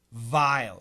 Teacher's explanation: Vile, my upper teeth touch my bottom lip.